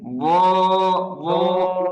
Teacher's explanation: বদটা কিন্তু মোটা, এটার জন্য জিহ্বার গোড়াকে ফুলাতে হবে। বো, কোথেকে উচ্চারণ হচ্ছে খেয়াল করেন, এখান থেকে, বো, বো।